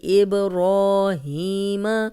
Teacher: اب با پہ کلکلا ہے اور جزم آ گئی ہے اس لیے ہلا کے پڑھیں گے. را کو 2 حرکات لمبا کریں گے، ہی کو 2 حرکات لمبا کریں گے.